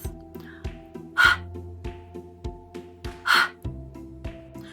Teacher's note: You've got to make sure it's uh just with your breath and unvoiced.